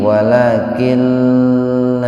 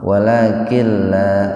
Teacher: diidghamkan, dimasukkan ke lam tanpa mendengung. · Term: idgham bila guna